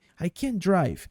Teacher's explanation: gente meio que quase não pronuncia esse T.